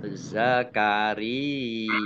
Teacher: Ya tasdid yang didahului dengan kasroh namanya mat tamkin. Zakaria. Ya, dibaca, ditahan 2 harokat.